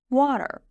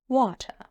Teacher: A lot of people think that just having a great American accent is about pronouncing R very strongly at the end of a word